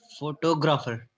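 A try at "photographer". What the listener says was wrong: नहीं ग्राफर नहीं, फोटोग्राफर। जब आप TO को टॉ करके पढ़ेंगे ना, जब आप TO को टॉ करके पढ़ेंगे तो प्रोनाउंसिएशन ऑटोमेटिकली ठीक आएगी। और ग्राफर नहीं पढ़ना है, ग्रा पर भी आप लोग, मतलब इसमें आप हर इस वर्ड के हर सिलेबल पे हम लोग स्ट्रेस देके प्रोनाउंस करते हैं, विच इज इनकरेक्ट।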